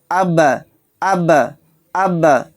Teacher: با کی آواز ٹکر کھا کر الگ ہو رہی ہے، اس کا مخرج ٹکر کھا کر الگ ہو گیا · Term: قلقلہ